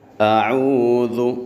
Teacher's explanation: ذال میں سیٹی پیدا نہیں کرنی، زو ایسے نہیں کہنا۔